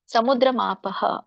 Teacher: ಸಮುದ್ರ ಮಾಪಃ ಅಲ್ಲಿ ಪಹ ಅಂತ ಹೇಳ್ಬೇಕು.